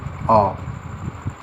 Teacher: द्विव्रत स्वर, इसमें मुंह पूरा खुलता है